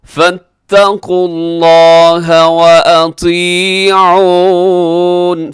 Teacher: لفظ اللہ موٹا پڑے گا، کھینچ کے پڑے گا کیونکہ اس کے اوپر کھڑی زبر ہے.